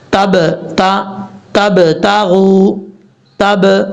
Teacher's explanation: یہ جو با کی آواز آ رہی ہے نا، ب یہ قلقلہ ہے. یعنی با کو پڑھتے ہوئے ہونٹ آپس میں ٹکرائیں گے، ٹکرانے کے فوراً بعد ہونٹ واپس لوٹیں گے، یعنی چھوٹ جائیں گے تو کیا ہوگا؟ قلقلہ ہوگا. اگر ہونٹ آپس میں ٹکرائیں گے اور وہیں مل جائیں گے، واپس نہیں لوٹیں گے تو قلقلہ کبھی بھی نہیں ہوگا.